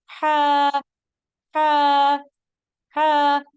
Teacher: हलक के दरमियानी हिस्से से बारीक और रगड़ खाती आवाज में अदा होगा हा हा हा हलक के दरमियान में आप अपनी उंगली रखेंगे